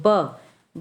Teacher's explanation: बा का उच्चारण करेंगे तो ओठ एक दूसरे को स्पर्श कर रहे हैं।